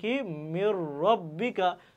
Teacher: ঈদগামের ফলে উভয় হরফ একই সময় উচ্চারিত হয় ইদগামের ফলে নুন সাকিন ও বিন এর পরবর্তী হরফটি তাসদিদ যুক্ত